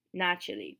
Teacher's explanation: we still pronounced the second a like an e naturally because it's not stressed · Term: reduced